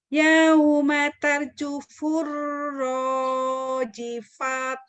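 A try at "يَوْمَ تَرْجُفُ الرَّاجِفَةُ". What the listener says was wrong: Kayaknya jadi ha, rojifah. Rojifah.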